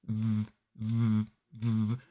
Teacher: if you're not feeling a vibration it's not quite right so this time we use our vocal cords and the sound comes down the tongue and through the teeth V and you should feel a bit of a vibration here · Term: voice sound